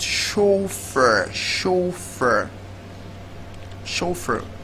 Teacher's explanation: It's a French word where the ch is actually giving us an exception of ch being pronounced as ch. So in the word chauffeur, the ch is actually pronounced as sh.